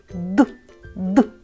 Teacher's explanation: Відчувайте, як горло дрижить. Це дзвінки приголосні.